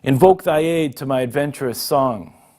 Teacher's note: The most common of these is the iambic pentameter, which is 5 stresses with 10 syllables in all